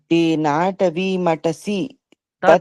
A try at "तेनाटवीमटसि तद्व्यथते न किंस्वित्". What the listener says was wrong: आपको मटसी पर नहीं रुकना है, तद पे रुकना है ना, तेना टवी मटसी तद व्यथते न किंस्वित, ऐसा।